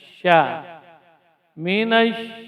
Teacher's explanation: Jadi walaupun ya yuktab dia ditulis namun tidak dibaca jelas, tapi diidghamkan ke dalam huruf asy-syamsiyah itu huruf sya. Sya huruf yang keluar dari tengah lidah. Ya, bagian tengah lidah itu terangkat. Sya huruf hamas dan rakhawah serta at-tafasyi.